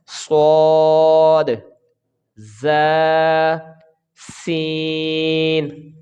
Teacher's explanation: زبان کی نوک اور دونوں دانتوں کے اندرونی کنارے سے یہ حروف صفیریہ کو ادا کیا جاتا ہے